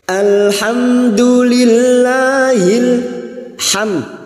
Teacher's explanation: mim sukun dibaca jelas tanpa mendengung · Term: Idhar syafawi